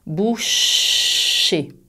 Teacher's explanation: avec le son ch, il y a de l'air qui passe. Tu peux sentir l'air quand tu places ta main devant ta bouche.